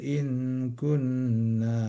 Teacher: Soalnya itu hurufnya izhar hukumnya izhar tidak boleh tertahan. Cepat janganjangan gak boleh lama-lama di situ soalnya enggak dengung.